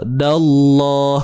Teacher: Pada lam tu kena tebal.